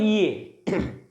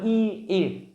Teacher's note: जीभ के आगे के हिस्से की मदद से बोलते हैं ई ए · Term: अग्र